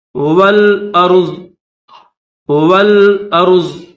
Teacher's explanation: تو جب اس پر ہم یہاں پر وقف کریں گے تو ضاد کے اوپر زبر نہیں پڑھیں گے